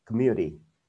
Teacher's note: Nếu ai đọc giọng kiểu Mỹ thì cái chữ T này nó đọc thành giống như chữ gần như chữ D vậy đó.